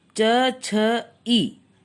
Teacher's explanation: इनके उच्चारण में हमारी जबान तालु को छूती है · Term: तालव्य